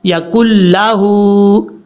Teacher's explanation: ہا کے اوپر الٹا پیش ہے، لمبا کریں گے ہا کو